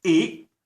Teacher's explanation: the glottal stop at the end of the word